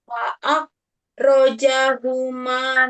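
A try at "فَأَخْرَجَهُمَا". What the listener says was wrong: bukan fa'ak, nak. Fa'ah, fa'ah.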